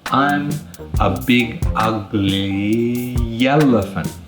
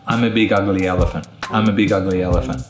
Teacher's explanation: we're going to add a yes sound to the beginning of elephant so it's going to become I'm a big ugly yellow elephant